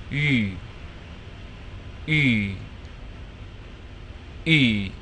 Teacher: So I'm going to round my lips like I'm about to whistle a tune, and then while the lips are rounded, I'm going to attempt to say E as in bee.